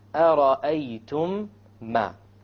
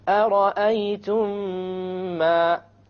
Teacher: You have once again the meme sakin followed by a meme. You merge it together and you have a ghunnah. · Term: idgham shafawi